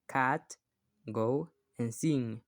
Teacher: these are made when the back of your tongue touch the soft part of the roof of your mouth